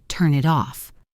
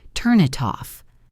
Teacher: A native speaker doesn't say, turn it off. They link the N sound to the I sound and the T sound to the O sound, making it sound like one long word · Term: linking